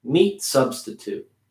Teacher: making that t i'm pronouncing it but i'm making it smaller